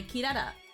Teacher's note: And it's like you kind of hear the R, but you also kind of hear the L.